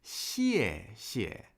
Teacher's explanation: 谢谢 would be a fourth tone and then a neutral tone.